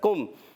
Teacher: کاف کا مخرج ہے زبان کی جڑ تالو کا سخت حصہ